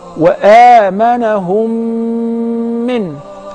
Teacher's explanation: So if the first Mim is non-vowel or Sakina, followed by a voweled Mim. So I will merge the first in the letter and I will pronounce them as one. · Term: Al-Mim As-Sakina